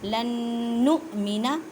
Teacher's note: حمزہ کو جھٹکا دے کے پڑھنا ہے کیونکہ حمزہ ساکن ہے